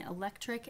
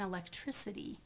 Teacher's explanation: the difference between electric and electricity you soften that velar um production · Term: velar softening